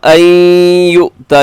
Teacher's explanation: یہاں نون ساکن کے بعد یا ہے تو ہوگا ادغام یرملون غنے کے ساتھ ، اور اس کی جو مد ہے وہ چھوٹی مد ہے،